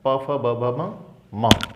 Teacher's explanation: ओष्ठ, यानी होठों से निकलने वाले वर्ण कौन से हैं, तो पूरा का पूरा प वर्ग आ जाएगा